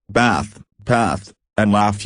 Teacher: In American English, bath, path, and laugh use a short, flat sound, the same vowel sound you hear in the word cat